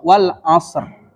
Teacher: jadi mengalir ke huruf ro dari Shad ke huruf ro